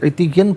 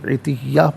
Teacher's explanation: اسے عتیًا پڑھیں گے، وقف کی صورت میں عتیہ پڑھا جائے گا، دو زبر کی تنوین وقف میں الف سے چینج ہو جائے گی